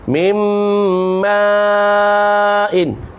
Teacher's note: Ma'in tu mat wajib muttasil, panjang dia 4 atau 5 harakat sebab huruf mat bertemu dengan hamzah dalam satu kalimah. Ma satu perkataan, satu kalimah menunjukkan maknanya air, mahin, mimma immahin. · Sekali lagi nun mati jumpa dengan mim pula, idgham bi gunnah lagi.